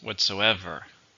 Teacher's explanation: Whatsoever. 4. Stress is on the third.